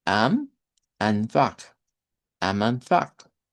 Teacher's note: estas vocales as de acá, las tres, se comportarían como una A abierta del español